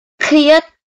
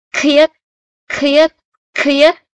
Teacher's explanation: Cô đọc là khiết thì các bạn sẽ cảm giác một luồng hơi nó bật ra ngoài. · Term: phụ âm bật hơi